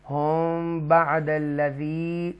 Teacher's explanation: ہم یہ ایک فائے شفوی ہے یہاں پر, تو ہم بعد الذی, میم ساکنہ کے بعد با ہے تو ایک فائے شفوی ہے, تو یہاں گنہ کریں گے